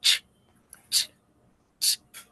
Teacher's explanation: Para pronunciar la che, la lengua choca contra el paladar justamente.